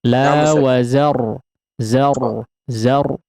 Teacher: Ra-nya agak digetarkan ya. Dikasih getaran yang halus ya. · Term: getaran ra-nya